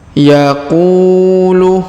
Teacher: huruf qu dipanjangkan dua harakat karena di depannya terdapat wau sukun